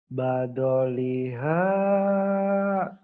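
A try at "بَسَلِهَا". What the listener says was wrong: Nggak ada titiknya itu mah. Ketuker. Basoliha.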